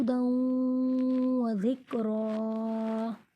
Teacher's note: تنوین کے بعد حروف ادغام میں سے واو آ گیا ہے اس لیے یہاں پر غنہ ہوگا